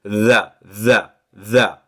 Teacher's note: on va mettre le bout de sa langue entre les dents du haut et les dents du bas, mais cette fois-ci, on va pas pousser un son T, on va pousser un son D. Et donc ça fait tha, tha, tha.